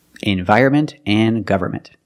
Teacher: the way Americans pronounce these two words, environment and government. If you want to sound more natural when speaking, don't pronounce the N.